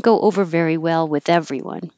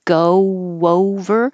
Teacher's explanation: you make your lips very small for the go and they're already in a small position for the next o so it makes kind of an invisible w